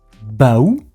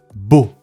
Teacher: This word is pronounced beau in French. The vowel O is pronounced as a simple open sound without any diphthongs.